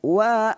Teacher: Wau itu makhrajnya ialah dua bibir yang dimuncungkan di hadapan itu makhraj huruf wau